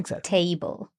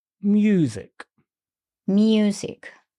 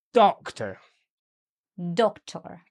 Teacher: So the nouns the stress is on the first syllable, but with verbs tends to be on the second syllable.